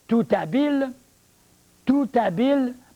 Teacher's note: parce que le h ne se prononce pas la liaison se fait bien